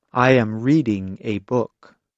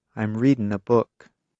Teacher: In careful speech, Americans pronounce the G at the end of the verb.